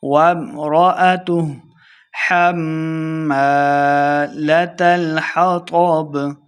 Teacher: میم شدد ہے غنہ کر کے پڑھیں گے